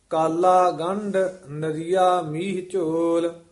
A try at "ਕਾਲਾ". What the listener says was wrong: ਕਾਲਾ ਨਹੀਂ ਕਹਿਣਾ, ਕਸ ਕੇ ਹੀ ਉਚਾਰਨ ਕਰਨਾ।